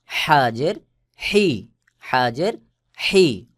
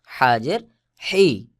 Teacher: হলকের মধ্যখান হইতে চাপ দিয়ে উচ্চারণ হবে